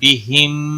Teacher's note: میم ساکن کے بعد میم مشدد آیا ہے، ادغام شفوی ہوگا ، گناہ کے ساتھ پڑھیں گے، کانو کا الف مدہ ہے